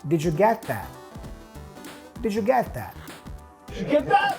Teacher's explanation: The T at the end of get and that are both pronounced with a stop T, so we hear, did you get that?